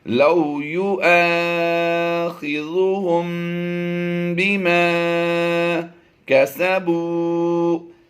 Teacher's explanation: میم ساکن کے بعد با حرف آ جائے تو وہاں پر اخفاء شفوی کرتے ہوئے ہم نے غنہ کرنا ہوتا ہے